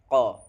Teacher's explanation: pangkal lidah bagian bagian belakang dengan mengangkatnya sedikit ke rongga atas. Huruf yang keluar darinya adalah huruf qo atau qof.